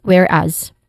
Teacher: starting with where which is the stressed syllable. Here it has a short e sound and then as which has a short a sound and a buzzing sound at the end despite the spelling where it is where it uses the letter s.